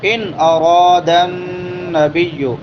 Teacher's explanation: ان وہبت نفسها للنبی ان اراد نبی، ان نون ساکن ہے، نون ساکن کے بعد حمزہ ہے، حروف حلقی میں سے اظہار ہوگا